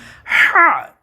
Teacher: আমাদের গলার যেই ইয়েটা আছে গলাটা আছে সেটাকে একত্রে হলক বলে হলকের মধ্যখান তথা গলার মাঝখান থেকে উচ্চারিত হবে যারা পুরুষ আছেন তাদের একটা ভাঙ্গা আছে ওই ভাঙ্গা থেকে উচ্চারিত